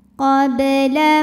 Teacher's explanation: ba sukun dihukumi dengan qalqalah sughra karena huruf qalqalahnya asli sukunnya ya dan ada di tengah bacaan, maka dibaca memantul dengan pantulan yang kecil